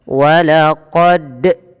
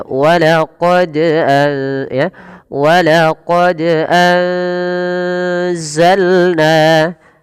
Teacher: Pada lafal huruf dal yang dia berharakat sukun, ini wajib kita pantulkan. Kenapa? Karena dal memiliki salah satu sifat yang kita namakan dengan bacaan qalqalah.